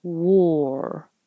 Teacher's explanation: you round your lips for the W but then you keep them rounded War as you're making the r my tongue is curling back · as you're making the r my tongue is curling back inside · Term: o r sound